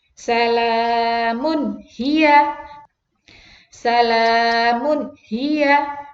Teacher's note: Idhar harus jelas ya, tidak boleh ada dengungnya.